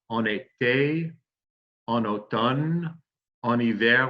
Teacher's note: Now notice when we say en été or en automne or en hiver, we're going to make the liaison. That's the link between the N in en and the vowel of the next word, the name of the season. So en été, en automne, en hiver, we make that liaison each and every time that we say that.